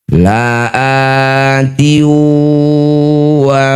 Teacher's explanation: Masukkan bunyi kasrah tanwin pada huruf waw. Bibir mencucu, dengung 2 harokat. · Innama tuaduna lau kasr tanwin bertemu wawuh disebut bacaan namanya idgham bighunah. Masukkan bunyi kasrah tanwin pada huruf wau. Bibir bercucu dengung dua harakat. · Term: idgham bi gunnah